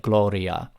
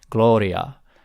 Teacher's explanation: It's not quite an L, but it's a tap. It's tapped farther in the back in the mouth. · It's just kind of tapped, almost like a Spanish rolled R, except not fully rolled, just tapped. So it's like Gloria.